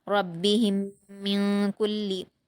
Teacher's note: میم پر جزم ہے تو ہا کو میم سے ملائیں گے اور میم ساکن کے بعد میم دوسرے کلمے میں آیا ہے تو یہاں ادغام شفوی کا قاعدہ ہوگا اور ہم غنہ کے ساتھ پڑھیں گے